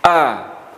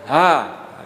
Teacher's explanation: huruf panjang Hamzah ini bersifat Zahra Zahra itu tak hanya nafas ketika kita melafalkan tidak boleh ada nafas yang berhembus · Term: huruf hamzah